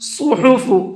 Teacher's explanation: صاد کو پر کر کے پڑھیں گے